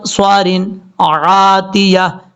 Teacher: یہاں پہ غنہ نہیں کرنا، آگے عین ہے بلکہ یہاں پہ اظہار حلقی ہے. عاتیہ نہیں پڑھنا، عاتیہ.